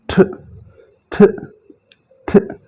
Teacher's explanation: ठ कहते हुए जुबान की नोक ऊपर वाले जो दांत हैं उनके बिल्कुल नीचे जाकर लगेगी